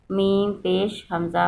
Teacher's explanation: منہ پہ جھٹکا دیں گے کیونکہ یہ حمزہ ہوتا ہے، اس کو واو نہیں پڑھنا، یہ حمزہ ہے، میم پیش حمزہ منہ ایسے، اس لیے اس کو جھٹکے سے پڑھتے ہیں۔